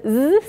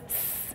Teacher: In the z sound, your voice box is on, and otherwise, s, your voice is not on. So these are a voiced and unvoiced pair.